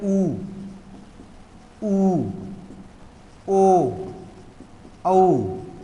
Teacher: वे स्वर या वे वर्ण जब जिनका उच्चारण करने से हमारे होठों की आकृति गोल हो जाए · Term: वृत्ताकार